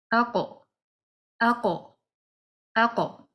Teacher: the letter qaf, when that letter is read with the sukoon, we need to apply qalqala to it, that we need to bounce it